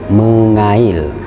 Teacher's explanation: konsonan K kemudian diikuti oleh huruf vokal, maka konsonan K berubah menjadi eng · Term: prefiks menasal